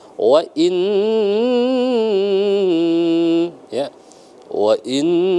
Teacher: gunnah musyaddadah, lama, jangan buru-buru.